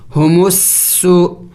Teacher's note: سین اس سیٹی والے حروف میں سے ہے تو پڑھتے وقت منہ سے سیٹی کی آواز بھی نکلنی چاہیے